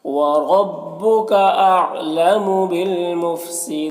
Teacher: وَرَبُّكَ، را کے اوپر زبر ہے، را کو پر پڑھیں گے، یہاں پر لام ساکن حرف ہے تو پیچھے والے متحرک حرف با سے مل کر پڑھا جائے گا، یہ الف کو نہیں پڑھیں گے، اور یہاں پر وقف کی صورت میں مد عارض وقفی ہوگا، تو اس طرح سے پڑھیں گے۔